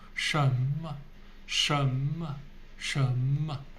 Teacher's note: Mo has neutral tone, which means no tone. Just very gentle.